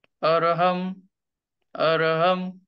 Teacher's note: याची संधी कशी होते अ र ह म अरहम अरहम मग अ चा जो उच्चार आहे तो गळ्यापासून आणि ओठांचा आकार कसा राहील थोडेसे उघडे असतील